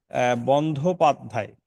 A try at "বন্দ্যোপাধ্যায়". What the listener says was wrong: না, বন্ধ নয়, এটা হবে বন্দ। বন্দ।